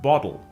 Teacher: the T in water, as well as the T in Gretel, is generally pronounced as a glottal stop in Cockney English